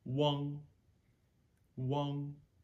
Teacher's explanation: You hear my voice just stopping at the end of that syllable.